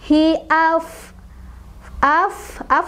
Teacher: Af harus ngeluarin udara karena dia punya sifat hamas ya. Af, wa-nya mad tabi'i sebabnya karena ada alif didahului oleh huruf berbaris fathah.